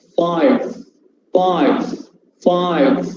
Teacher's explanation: The fricative sound, 5. The upper teeth must touch the lower lip.